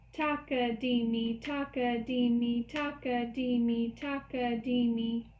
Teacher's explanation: the downward portion of the beat shares the same kind of vowel ah taka is all in the down or portion of the B